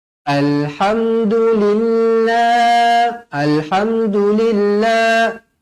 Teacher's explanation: lafzul jalalah dibaca nipis kerana sebelumnya berbaris bawah